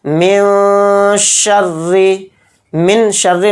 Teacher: نون کو ظاہر نہیں کرنا ہے، نون کو ناک میں چھپانا ہے۔ را کو یہاں پر باریک پڑھیں گے کیونکہ را کے نیچے زیر ہے۔ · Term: اخفا